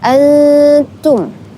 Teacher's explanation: di sana dinamakan ikhfa hakiki karena ada nun mati bertemu dengan ta, maka dibaca samar. Jadi, teman-teman harus menyamarkan ya bunyinya.